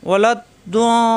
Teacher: আলাইহিম কণ্ঠনালীতে সব দিয়ে আলাইহিম, ওয়ালাদ দ ওয়া এই লা মেলবে দদের সাথে, জিব্বার গোড়ার কিনারা উপরের মারি দাঁতের গোড়ায় লাগবে, ওয়ালাদ দ সারা লিপটান হবে, ওয়ালাদ দাল্লিন।